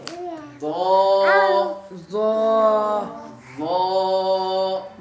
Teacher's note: آخر میں وا کرنا ہے، دال کی آواز نہیں نکالنی